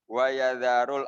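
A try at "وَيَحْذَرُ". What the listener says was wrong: Ini wayahzaru ya, bukan wayazaru. Wayahzaru.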